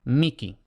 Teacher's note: es posible pronunciarla no aspirada, sino como una K